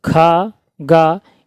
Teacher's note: और ख ग इनका है कंठ